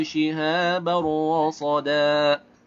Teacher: dibacanya melebur tapi tanpa disertai dengan adanya gunnah